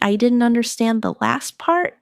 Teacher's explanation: Stress last part to focus the listener's attention.